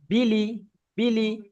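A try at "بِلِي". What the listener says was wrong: বিল নয়, বাজের বি, লামজের লি, বিলি।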